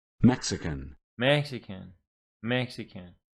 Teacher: three syllables and the stress is on the first one